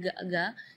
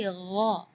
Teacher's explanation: Di ayat ini yang pertama di makhraj huruf ghain ya, ghairil maghdubi ya, perlu diperhatikan bukan G, bukan huruf G ya, bukan ga, tapi gha. Jadi kalau ga itu dia makhrajnya dari lidah. Ya, tapi kalau huruf ghain itu dari bagian tenggorokan ya.